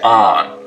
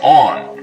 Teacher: north of this line, most people say on, rhymes with don. South of it, they say on, rhymes with dawn. Of course, this doesn't apply at all if you rhyme don and dawn, only if you have two distinct pronunciations. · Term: the on line